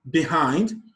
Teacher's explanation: The stress is placed on the syllable hind.